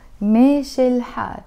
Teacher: I'm not going to say meshe and then pause and then say il and then pause and then say ilhal. No, I'm saying it all with a liaison.